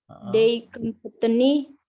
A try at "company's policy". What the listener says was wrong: The company's policy. Kenapa selalu ada T-nya kalau kamu ngomong company? Company's policy. Policy.